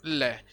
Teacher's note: वे व्यंजन जिनका उच्चारण करने पर वायु जीवा के पार्श्व भाग से यानी दोनों तरफ से वायु बाहर निकलती है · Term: पार्श्विक व्यंजन